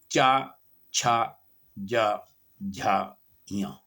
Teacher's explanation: जिह्वा का अग्रभाग, जीभ का अगला हिस्सा, और तालु का अग्रभाग जो कठोर है, मतलब अगला वाला भाग तालु का अग्रभाग को स्पर्श करते हुए उच्चारण किया जाता है, जैसे कि चा, छा, जा, झा, या, ये इसकी श्रेणी में आते हैं। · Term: तालव्य व्यंजन